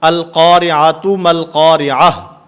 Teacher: گول تا یہ بھی وقف کی حالت میں ہا سے بدل جاتی ہے